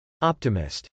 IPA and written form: ˈɑptɪmɪst (optimist)